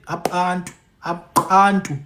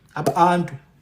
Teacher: It's almost like they're sucking the air in. Ap' antu. You can't write There's no way to write So those symbols are are your best uh way to represent that sound. · Some elders will say, Apantu, Apantu. It's almost like they're sucking the air in.